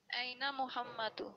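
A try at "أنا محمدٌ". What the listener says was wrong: दू नहीं पढ़ते, जो मुजक्कर इसम होता है उसके साथ दू नहीं पढ़ते, या तो दुन पढ़ें या मुहम्मद पढ़ें सिर्फ। जी, तनवीन, या तनवीन पढ़ें या कुछ भी ना पढ़ें।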